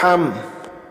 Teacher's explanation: মিম সাকিনের পরে বা মিম নাই তাই গুন্না করি নাই